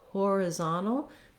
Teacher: stress here on the zom syllable which means our vowels change in the first part of the word we have secondary stress on the first syllable so horizontal now we no longer have that schwa on the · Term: third syllable stress